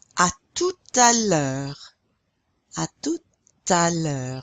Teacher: You're pronouncing that T now because it's followed by a vowel. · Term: liaison